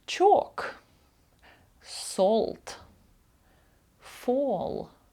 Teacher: довге о подовжене О дві крапки у транскрипції перед двома літерами л